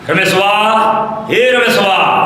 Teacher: जब हम बोल रहे हैं ओम तो ह्रस्व स्वर और दीर्घ स्वर दोनों से अधिक समय ले रहा है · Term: प्लुत स्वर